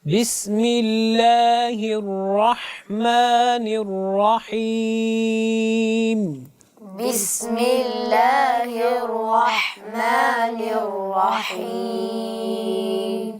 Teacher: ہا کو وسط حلق سے ادا کیجیے۔